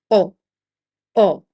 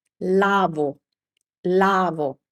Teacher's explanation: In Italian that never happens ever. The Italian o is always a short o sound. So no u sound.